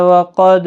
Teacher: قاف مستعلیہ ہے، پر پڑھا جائے گا، دال ساکن پر قلقلہ ہوگا